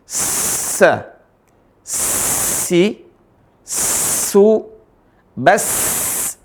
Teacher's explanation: Ada huruf sin dia dibaca dengan tipis dan keras.